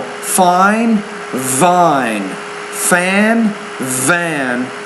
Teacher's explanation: you're not pronouncing that v with enough vibration